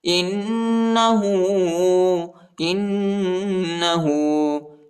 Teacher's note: ہاں پر الٹا پیش آیا ہے، اس کو تقریباً 1 الف کے مقدار تک کھینچیں گے